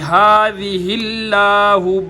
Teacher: हा के नीचे ज़ेर थी तो लफ्ज़ अल्लाह का लाम बारीक होगा